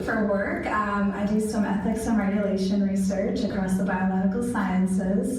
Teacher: she lost volume and she ended up going into a little bit of vocal fry